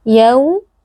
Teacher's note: di sini berlaku lin, yaitu wawnya dibaca dengan lunak